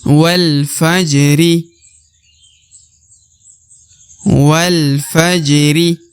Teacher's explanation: ja dibaca dipantulkan ya karena huruf ja apabila berharakat sukun maka dia harus dibaca pantul karena dia termasuk huruf huruf Qalqalah atau huruf huruf pantul